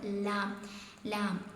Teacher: ഇനി അടുത്തതാണ് ലാം ലാം എന്താണ് നാവിന്റെ തലയുടെ അരു നാവിന്റെ തലയുടെ അരു മേലെ മുൻപല്ല് മേലെ ഏത് മുൻപല്ലും അതോടാം മേലെ മുൻപല്ലുകളുടെ ഊന് മേലത്തെ ഒരു മുൻപല്ലിന്റെ ഊന ആയിരിക്കണം ലാം പറയുമ്പോൾ